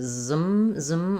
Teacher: for this ism at the end, we're basically, there's almost no vowel there. It's going right to zum. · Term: Z sound